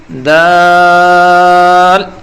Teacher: زبان کی نوک کو اوپر کے دانتوں کی جڑ سے لگائیں اور تھوڑا لمبا کر کے بولیں گے